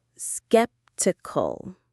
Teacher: The stress is right at the very beginning on skip. Skeptical.